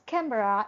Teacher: a is being eliminated okay or omitted in the pronunciation of camera